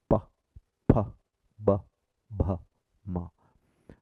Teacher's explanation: And the last possible position is where both the lips are pressed together and you get pa, pa, ba, bha, ma